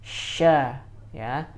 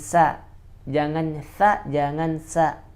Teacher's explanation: Sya, makhrajnya ada di lidah bagian tengah yang dipertemukan kepada langit-langit.